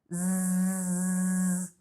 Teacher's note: você vai sentir uma vibração como se fosse um barulhinho assim, sabe? A abelha que faz. É esse som que eu quero. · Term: som de Z